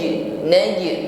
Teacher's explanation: ditahan sempurnakan dengungnya langsung fokus pada Nun yang kedua Min naj Jim sukun maka tampakkan pantulannya jangan ditahan Min wa bukan tertahan pantulkan naj naj ya pantulannya ringan ya